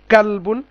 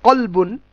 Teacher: কাফের একটুখানি সামনের দিকে, আর কফ হচ্ছে একটু পেছনের দিকে। কফটা ভারী উচ্চারণ আর কাফটা হচ্ছে হালকা উচ্চারণ।